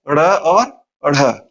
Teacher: उत्क्षिप्त व्यंजन, उत्क्षिप्त से तात्पर्य होता है उछाला हुआ, अर्थात ऐसे व्यंजन जिनका उच्चारण करते समय जिह्वा ताल को स्पर्श करके तेजी से नीचे की तरफ आती है और फिर ऊपर की तरफ जाती है